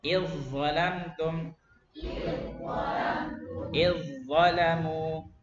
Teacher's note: Idzalamtum tu 2 3. Langsung za. Zalnya hilang, masuk ke za.